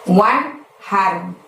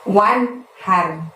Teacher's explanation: Wan-nya itu bunyi N-nya harus jelas ya teman-teman, karena nun mati bertemu hak. Haknya seperti biasa kita lafadzkan dari tenggorokan bagian tengah, jadi terdengar lebih lembut, lebih halus. Wanhar, bukan wanher, tapi wanhar.